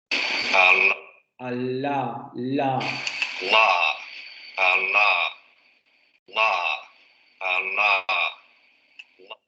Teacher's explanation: Aquí la punta de la lengua se pega hacia la zona de los alvéolos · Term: la lateral